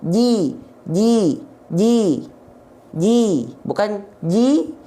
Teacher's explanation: ji direndahkan rahang bawahnya, ya, dan diangkat tengah lidahnya biar vokal i-nya sempurna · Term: harokat kasroh vokal i